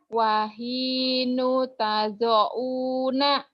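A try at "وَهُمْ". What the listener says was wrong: Wahinu. Ini setahu saya ini patah deh, bukan doma. Wahinu. Kok jadi wahinu ya? Iya, tapi ini kamu bacanya wahinu. Wahina atau ini kan patah.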